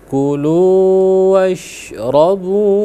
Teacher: Jadi di sana ada huruf syin yang sukun. Setelah itu ada huruf ro. Hati-hati jangan sampai ada pantulan ya.